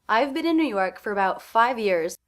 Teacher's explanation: The stressed words in this sentence fragment, New York and 5 years.